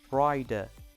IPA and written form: raɪdə (rider)